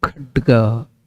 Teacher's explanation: So you can see at some level when I do the pronunciation, there will be a sound in the diaphragm of this mic because that is the Mahaprana. I use more energy from the lungs, that is called Mahaprana.